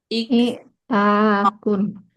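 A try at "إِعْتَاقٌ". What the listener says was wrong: Ini panjang ya. Sebelum akhir harus panjang.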